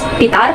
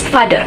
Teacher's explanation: But in English language, the p sounds change into fricative sounds.